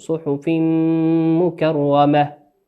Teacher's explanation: وقوله سبحانه وتعالى صحف مكرمة صحف مكرمة تنوين في قوله عز وجل صحف تنوين أتى بعده حرف الميم والميم من حروف الإدغام بغنة